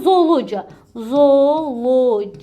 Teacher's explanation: qoşa o'ları bir o kimi tələffüz edəcəyik